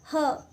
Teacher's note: कहीं भी जीभ टकरा नहीं रही, सिर्फ कंठ से आवाज आ रही है